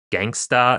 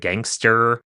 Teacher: this post vocalic r is deleted depending on some social factors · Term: r dropping